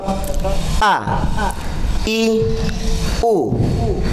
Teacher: Jadi hamzah itu keluarnya dari tenggorokan terjauh atau ujung tenggorokan. Kita sebut saja ujung tenggorokan.